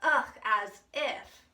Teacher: that hallmark quavering voice that peaks up in intonation at the end of the sentence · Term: uptalk